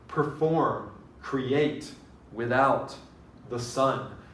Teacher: Those are all stressed on the second syllable. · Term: iambic